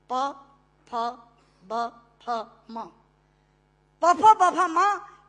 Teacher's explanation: दोनों होंठ मिलाकर बोले जा सकते हैं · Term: ओष्ठांग